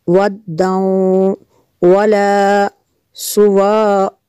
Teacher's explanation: تنوین کے بعد واو ہے، حروف ارملون میں سے، یہاں پہ ادغام ہوگا اس لیے یہاں پہ غنہ کریں گے